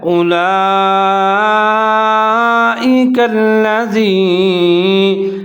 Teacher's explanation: یہاں لام کے اوپر مد ہے تو اس کو آپ نے 3 سے 4 سیکنڈ تک لمبا پڑھنا ہے، اس کو مد متصل واجب کہا جاتا ہے. اس کے بعد لام کے اوپر شد ہے تو آپ نے اس کو کاف کے ساتھ ملانا ہے، زال کا خیال رکھنا ہے، زا نہیں پڑھنا.